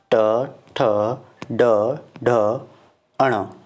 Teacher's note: आपकी जीभ की जो प्रारंभिक जो भाग है वो आपके तालु के प्रारंभिक ऊपर के भागों से स्पर्श करता है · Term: मूर्धन्य